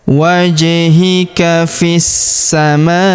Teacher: Huruf ma kita panjangkan empat atau lima harakat karena di depan huruf ma terdapat alif yang di atasnya terdapat tanda garis bacaan panjang empat atau lima harakat ya. · di sini kita sukunkan huruf hamzah atau i ya. Kita sukunkan karena terdapat tanda berhenti atau waqaf, yaitu waqaf jaiz.